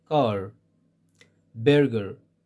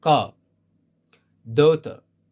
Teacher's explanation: if the letter R comes after a vowel sound, they don't pronounce it at all. Car, daughter, they don't pronounce it.